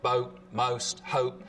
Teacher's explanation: goat fronting again so the vowel sound in boat most hope starts with the tongue further forwards in the mouth